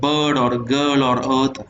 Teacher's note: it is unrounded, it is a central vowel and again it is also between the half open and half close